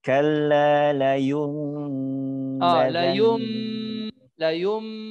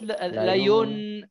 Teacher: Changing the noon into the mim.